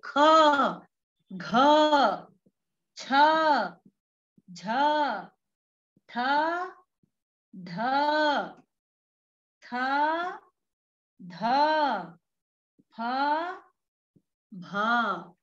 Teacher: यहाँ पर ये बात हमें स्मरणीय करनी पड़ेगी कि युग्मौ सूक्ष्माणौ, प्रत्येक वर्ग का जो द्वितीय और चतुर्थ वर्ण है वही सूक्ष्म है, और इसीलिए इनको महाप्राण भी कहते हैं। महाप्राण क्योंकि यहाँ पर अत्यंत प्रेशर लगाना पड़ता है, यहाँ पर वायु ज्यादा निकलती है · ख और इसके बाद घ, इनमें ज्यादा वायु लगती है।